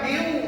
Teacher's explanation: Maknanya nun mati tak boleh dibaca, tak boleh dibunyikan, dia dah masuk ke dalam waw. · Miu tu bagi sengau betul-betul dua harakat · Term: idgham